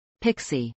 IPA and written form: ˈpɪksi (pixie)